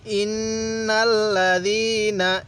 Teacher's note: ইন্নাল্লাযীনা, এখানে গুন্নাহ করব, কারণ মিমে নুনে তাজদিদ গুন্নাহ করা ওয়াজিব। তো নুনের উপর তাজদিদ আছে এজন্য আমরা গুন্নাহ করব।